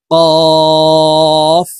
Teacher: কফ হরফ জিহ্বার গোড়া তার বরাবর উপরের তালুর সঙ্গে লাগাইয়া উচ্চারণ করব।